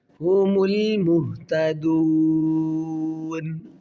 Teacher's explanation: میم کو لام کے ساتھ ملائیں گے، میم لام پیش مل